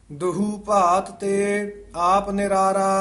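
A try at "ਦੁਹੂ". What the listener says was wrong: ये पद नूं ध्यान नाल उचारण करना है दुहू नहीं कहना दद्दे हूड़ा हाहे हूड़ा दद्दे औंकड़ हाहे दुलैंकड़ दुहू दुहू पात ते आप निरारा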